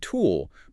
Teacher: my lips are already rounding for the ooh sound before I'm even done with the t.